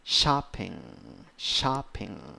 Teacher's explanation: eight you have eight letters but only five sounds two syllables the first syllable is the stressed one